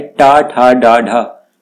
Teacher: जब आप इनको बोलते हैं, इनका उच्चारण करते हैं, तो आपकी जीभ पलटती है। ठीक है, यानी घूमती है जीभ, तो इनको क्या कहते हैं? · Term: मूर्धन्य व्यंजन